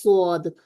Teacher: अब सौद को हमने हमेशा पुर ही पढ़ना है, उसको हम बारीक तो नहीं पढ़ सकते ना, यानी कि इसमें इस्तिफाल हो ही नहीं सकता।